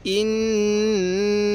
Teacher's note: এই নুনের মধ্যে আমাদের গুনাহ করা ওয়াজিব